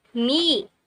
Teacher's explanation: we force the air to go through our nose we only open our mouth if there's a following vowel sound as in me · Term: nasals